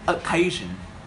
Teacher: We put the word stress in the second syllable, and the very first sound is O sound.